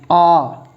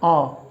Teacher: मुंह है खुला रहता है, ये लो जी, आ बोल के देख लो, आ मुंह खुला रहता है। जिह्वा बिल्कुल भी ऊपर नहीं उठती है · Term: विवृत स्वर